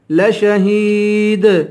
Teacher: لشہید، آخر میں یا ہے، یا حروف مدہ ہے، اس کو ایک الف کے برابر کھینچ کے پڑھیں گے، اور آخر میں دال ہے، یہاں قلقلہ ہوگا